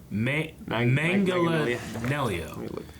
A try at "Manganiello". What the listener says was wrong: There's no J sound in the pronunciation. Say mang as in mango, and then add anello.